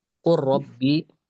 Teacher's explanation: Jadi kita ee harus paham dulu hukum asalnya itu izhar. Tapi ketika lamul fi'linya itu bertemu dengan huruf lam atau ro maka hukumnya idgham bukan izhar lagi